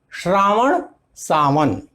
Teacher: श्र स में बदलता है, दंत्य स में।